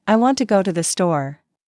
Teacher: The stress is on want and store. The words to and the are much softer.